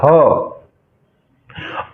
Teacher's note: glottal प्रकार की धमनिया यानी कि स्वर यंत्र मुखी धमनिया